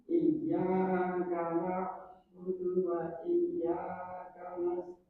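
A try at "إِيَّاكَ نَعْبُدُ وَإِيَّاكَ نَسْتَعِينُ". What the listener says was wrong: perhatikan di sini ada ya bertasdid ya bertasdid setiap yang bertasdid ada nabrah penekanan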